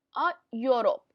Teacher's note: अब यहाँ पर य की साउंड आती है यूरोप में, ई की नहीं आती